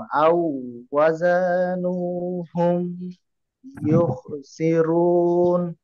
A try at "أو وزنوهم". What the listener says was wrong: আচ্ছা, আউ ওয়া লম্বা করবো না, কারণ জবরের সাথে আলিফ না থাকলে লম্বা হয় না, হ্যাঁ। আউ ওয়াজানুহুম, আবার বলেন, আবার বলেন আওয়াজানুহুম।